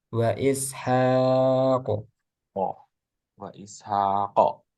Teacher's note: Terus qof ketika sukun mantulnya tebal